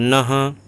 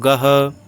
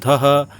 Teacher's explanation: विसर्ग का उच्चारण जो होता है वो होता है ह, एक तरह से ह होता है, आधा ह।